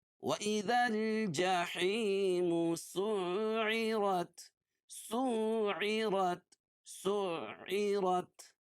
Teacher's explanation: وَإِذَا الْجَحِيمُ جَحِی یا ساکن سے پہلے زیر ہو تو یا مدہ ہوتی ہے اس کو ایک الف کے برابر کھینچ کے پڑھتے ہیں اور سین کو عین میں سختی کے ساتھ ملائیں گے. کیوں؟ اس لیے کہ عین کے اوپر تشدید ہے